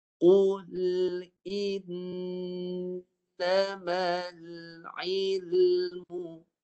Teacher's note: Gunnah bagi nun yang bersabdu tu dia menggunakan keseluruhan rongga hidung. Penuh di rongga hidung. Suara semua di hidung.